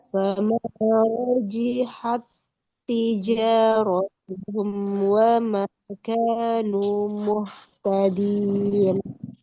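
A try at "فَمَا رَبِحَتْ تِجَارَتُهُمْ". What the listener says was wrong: Oke, fama robihat bukan rojihat. Nah ini huruf ba ya. Fama robihat tijaratuhum wa ma kanu muhtadin. Suara haknya dialirkan suara dan nafasnya.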